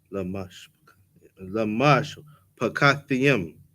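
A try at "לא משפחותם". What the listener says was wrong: No yum. Just Lamash Pakathim.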